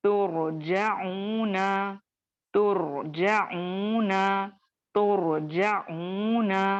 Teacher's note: را موٹا پڑھا جائے گا، دیگر اس کے آزو بازو جو بھی حروف آ رہے ہیں وہ ترقیق یعنی باریک پڑھے جائیں گے